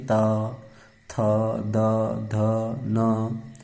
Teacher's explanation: दांत और जीभ के स्पर्श से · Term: दंत्य वर्ण